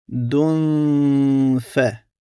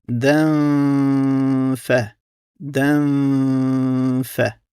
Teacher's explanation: u kažemo jasno, a drugo n struji u nosu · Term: kroz nos